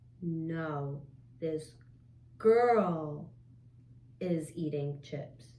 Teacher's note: good good emphasis on the word girl